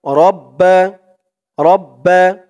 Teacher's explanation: তাশদিদ ওয়ালা হরফ দুইবার হলো এখানে তাসদিদের উচ্চারণটা দুইবার হলো মানে এই বা উচ্চারণ একভাবে একবার হবে তারপরে এই তাসদিদটা আরেকবার বা হয়ে যাবে দুইটা বা হবে